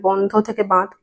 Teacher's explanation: এই নাসিক্য ব্যঞ্জন ধ্বনি গুলো লোপে পূর্ববর্তী স্বরধ্বনি সানুনাসিক হয়ে যাচ্ছে। সানুনাসিক হচ্ছে বলেই কিন্তু চন্দ্রবিন্দু আসছে।